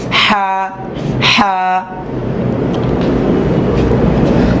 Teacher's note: হচ্ছে জিম সবচাইতে শক্ত জিম তারপর আছে বা খুবই নরমাল হা গলার ভিতর থেকে হলকের মাঝখান থেকে